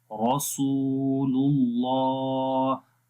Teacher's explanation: सीन को भी लंबा करेंगे, वाव मद्दा है, वाव के ऊपर जज़म है, उससे पहले पेश है और अल्लाह के नाम से पहले पेश आ गई है।